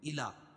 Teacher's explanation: کھڑا زبر قائم مقام الف مدہ کہ اس کو ایک الف کے برابر کھینچ کے پڑھیں گے